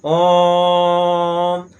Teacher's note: इसके उच्चारण में दीर्घ स्वर से भी ज्यादा समय लगेगा। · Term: पलुत स्वर